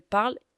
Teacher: Le ENT, à la fin de ils, elles parlent, est totalement muet.